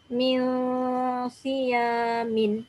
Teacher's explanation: Okey, min kita panjangkan. Dan kita sembunyikan bunyi min tu, kita tak sebut min. Min, dia seolah tu bibir tak rapat sangatlah. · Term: ifaq hakiki